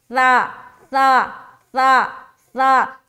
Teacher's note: کیونکہ اس جو ہے نا ایسا پڑھنا، وہ گویا کہ یہاں پر سا نہیں بلکہ سین ہے، تو اِسْمُهُ نہیں پڑھنا، اِث بغیر سیٹی کے نکالنا ہے سا کو، سا سا سا سا، زبان کی نوک کو ثنایا علیہ جو ہے دانت اس کے کنارے پر لگائیں گے، اندرونی کنارے پر